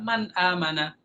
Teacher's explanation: Man dari nun dari tengah-tengah lidah. Amana dari tenggorokan. Jadi sangat jauh. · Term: huruf yang berjauhan